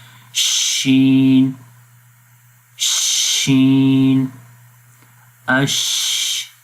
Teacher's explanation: منہ کے اندر شین کی آواز پھیل رہی ہے